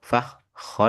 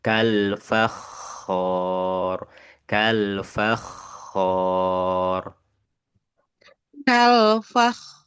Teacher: di tengah di tengah huruf K itu enggak boleh ada suara yang hilang